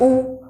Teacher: जैसे कि हम बोल रहे हैं ऊ, और अगर हम ओष्ठ की सहायता ना ले तो ऊ का उच्चारण जो है वो नहीं कर पाएंगे।